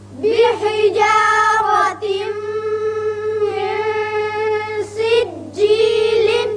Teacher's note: جب میم سے ملائیں گے تو ادغام غننے کے ساتھ ہوگا